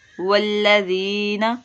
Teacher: یا مدہ کا قاعدہ، نون کو بالکل بھی لمبا نہیں کرنا